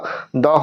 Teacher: দ হচ্ছে অল্পপ্রাণ আর ঘোষ।